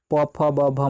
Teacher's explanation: इन वर्णों को बोलने से ओष्ठ यानी कि हमारा ओठ दोनों सट जाता है, स्पर्श कर जाता है, इसलिए ओष्ठ वर्ण के अंतर्गत आता है।